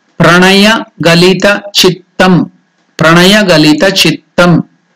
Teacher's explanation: So the yan, underneath the yan you can see the dot indicating that it is na, murdanya. The palate should touch above.